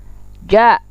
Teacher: Ja, tengah lidah bertentangan dengan langit-langit.